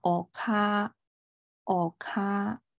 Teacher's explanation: 后面这个▁a▁你就不要发音了，只把前面这个假名给它拉长一拍就行了